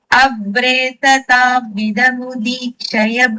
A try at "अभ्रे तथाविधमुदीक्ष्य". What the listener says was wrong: Mudikshaya. No, it is not Shaya. Okay. Mudikshya.